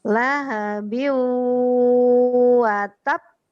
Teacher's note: itu wawnya ditahan karena dia idgham bi gunnah. Idgham dengan dengung. Dia harus tahan.